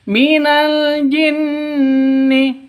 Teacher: non tasydidnya berarti dengung dua ketukan, gunnah musyaddadah, dengung dua ketukan